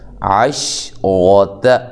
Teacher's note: را کو موٹا کریں اور تا کو باریک پڑھنا ہے